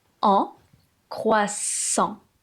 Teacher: Le AN qui forme la voyelle nasale.